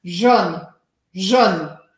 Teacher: E no sul da França, esse Jaune, que eu estou agora forçando até um pouco, Jaune, não se pronuncia com um som tão fechado. E a gente acaba pronunciando assim, ó, Jaune, Jaune. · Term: sotaque